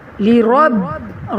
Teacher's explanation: را موٹا اور با پر جماؤں کے ساتھ کلکلا